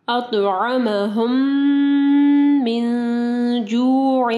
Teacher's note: نون ساکن کے بعد جیم ہے، اخفا غنہ ہوگا